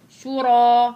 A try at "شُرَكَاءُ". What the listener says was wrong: لا مش شورا شورا انت ما لما انت لما ما بتجيجي على مخرج الراء انتبهي شورا خلي الراء لسانك يضرب في سقف حلقك